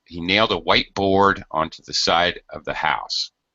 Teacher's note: most of the stress goes on board